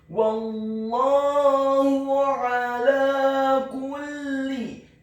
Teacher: huruf a-nya ditekankan keluar dari tenggorokan bagian tengah